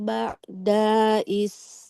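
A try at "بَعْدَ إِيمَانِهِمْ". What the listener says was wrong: Dalnya nggak boleh dipanjangkan. Huruf berharokat fathah panjang kalau ada alifnya ya.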